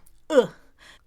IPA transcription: ə